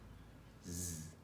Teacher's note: s, except you're making a sound with your vocal cords as well. So it's z.